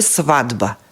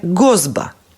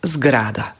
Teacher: Не можам да го изговорам и затоа првата согласка ја изедначувам според втората Б, која што е звучна, и ова Т од сват ќе ми стане звучно и ќе стане Д. И ќе биде свадба. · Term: едначење по звучност